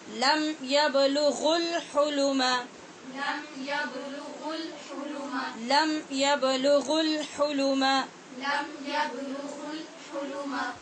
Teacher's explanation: اب قاعدہ یہ ہے کہ جب واو مدہ کے بعد آگے حمزہ وصلی آتا ہے اور یہ لام تعریف کا آتا ہے، تو ان صورتوں میں یہاں جو واو مدہ ہوتا ہے اس کو گرا دیتے ہیں. گرانے کا مطلب یہ ہے کہ آواز میں اس کو شامل نہیں کرتے، ڈائریکٹ پیچھے والا غین آگے والے لام کے ساتھ جا ملے گا، پھر اس وقت اس کی آواز اور ہو جائے گی.